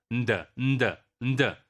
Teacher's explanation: You see, isn't it very interesting that the d stop is released through nasal cavity? And then we can also have the pre-nasalized sounds like the n, d together